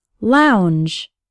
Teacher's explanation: the letter L sounds like in the words like and Lady the o U has an ow sound like in the words how or loud and the letters NG g e are like at the end